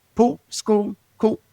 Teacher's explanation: So it's a lazy L and it's almost non-existent.